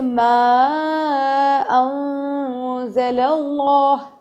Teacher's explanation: اخفا مطلب چھپا دیں گے، یعنی نون کے جو نون کا ہے ن اس کا اظہار نہیں کریں گے، ناک میں لے جا کے 2 سیکنڈ تک اس کو چھپائیں گے